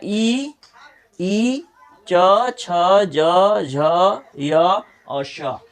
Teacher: इनका उच्चारण स्थान है तालु, यानी इनको बोलते समय हमारा जीभ जो है वो तालु में स्पर्श करेगा। जीभ का जो ऊपर वाला हिस्सा है वो हमारे तालु में स्पर्श करेगा, तो हम समझेंगे कि हम तालव्य को बोल रहे हैं।